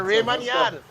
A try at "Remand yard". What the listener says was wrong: Gentleman, please pronounce the thing properly. Remand yard. Remand, not Raymond. Remand.